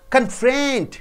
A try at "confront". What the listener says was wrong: Because it's a verb. Friend should be stressed more.